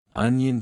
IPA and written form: ˈʌnjən (Onion)